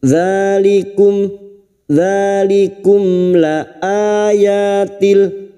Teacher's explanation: mim sukun dibaca jelas tanpa mendengung, idhar syafawi, mim sukun dibaca jelas tanpa mendengung.